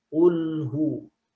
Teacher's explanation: Kalau bacanya masih ulhu, masih lamnya tebal, maka dia masih kesalahan yang khofi. Ya, tidak baca tipis, misalkan bacanya tebal lamnya. Ulhu. Itu kesalahannya kesalahan khofi.